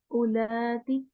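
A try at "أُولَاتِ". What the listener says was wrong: उ उ पुल नहीं करें अगेन.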